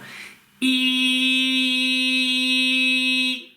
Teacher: очень острый такой, очень резкий звук, и язык в то же время находится за нижними зубами